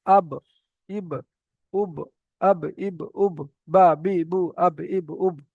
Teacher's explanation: বা, বা এর মাখরাজ কি? দুই ঠোঁটের ভিজে অংশ হতে উচ্চারিত হয় বা